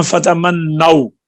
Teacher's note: تو واو پر وقف ہوا ہے تو ہونٹ ویسے ہی گول ہو گئے ہیں، یہاں پر اشمام خود بخود ہی ہو گیا ہے